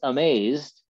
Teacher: two syllables and just like we would normally say the word the stress in that two-syllable word by itself is on the second syllable